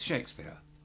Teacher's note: We just don't say the R sound. So it's Shakespeare.